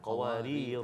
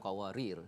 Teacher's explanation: Yang tu bila waqaf kita baca panjang qawarira, bukan qawarir ya.